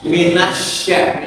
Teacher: Shin itu tengah lidah dengan langit-langit bagian tengah.